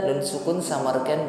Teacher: Nun sukun samarkan pada huruf sa disertai dengan dengung yang ringan.